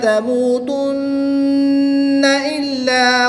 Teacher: نون مشدد میں غنہ کر کے پڑھیں گے، نون کو لام کے ساتھ ملائیں گے۔